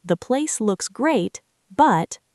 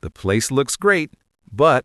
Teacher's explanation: When you say the place looks great, your voice needs to go up in pitch on the word great. And then you pause for just a microcond before you say but. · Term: upward pitch